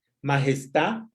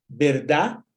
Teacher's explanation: Omisión de D en posición final, majestad en lugar de majestad, verdad en lugar de verdad.